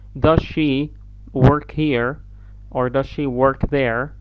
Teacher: بندغم الاس في الشا ساوند فما نسمعش الاس نسمع الشا ساوند على طول تسهيل النطق فبنقول is she okay does she work here or does she work there. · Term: blending sounds